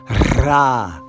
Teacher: you have the Spanish R with an ah vowel underneath it. If you can roll your tongue, that's great. Ra. And remember, in Sephardic Hebrew, the emphasis is on the final syllable.